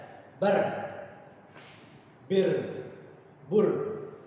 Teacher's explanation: Getar pada huruf ro yaitu hanya 2 getaran saja, tidak banyak-banyak, bukan bar, bir sampai 3 sampai 4 getaran, itu salah. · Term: getar ro